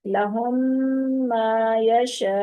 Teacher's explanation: میم ساکن کے بعد دوسری میم آ جائے گی، وہاں پر ادغام ہوگا، یعنی پہلی ساکن میم دوسری متحرک میم کے اندر داخل ہو جائے گی